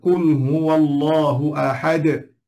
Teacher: Dan kalangan orang Melayu kita selalu baca bunyi da.